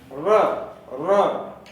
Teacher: र को लुंठित ध्वनि कहते हैं। र, जब र का उच्चारण करते हैं तो र मसूड़े से लग के लुढ़कता है, इसलिए इसको लुंठित वर्ण कहते हैं। र, र उच्चारण करके देखिए, जिह्वा का अगला भाग थोड़ा सा लुढ़कता है, र।